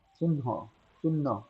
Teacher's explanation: প্রথমবার অল্পপ্রাণ পরের পরের বার মহাপ্রাণ রূপে